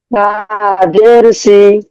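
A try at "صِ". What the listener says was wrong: নরম হবে, হরফ উচ্চারণ নরম হচ্ছে কিন্তু উচ্চারণটা নরম হচ্ছে না। জিহ্বার আগা সামনে উপরে দুই দাঁতের আঘাত সঙ্গে লাগবে, আঘাত দিকে লাগবে।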